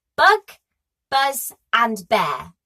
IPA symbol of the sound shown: b